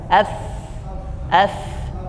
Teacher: jadi Fa itu gigi seri bagian atas bisa dilihat di gambarnya menempel ke bibir bagian bawah